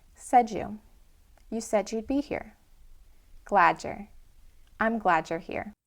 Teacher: This reduction of the D plus a Y sound to a J sound is actually quite common.